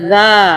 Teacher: الف کی وجہ سے ہم اس کو ایک الف کے برابر کھینچ رہے ہیں